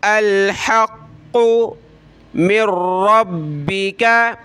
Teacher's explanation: क़ाफ़ को मोटा करेंगे और मीम को रा के साथ मिलाएंगे।